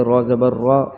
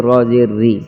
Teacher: تو را کو زبر اور پیش کی حالت میں موٹا پڑیے گا اور زیر کی حالت میں باریک پڑھیں گے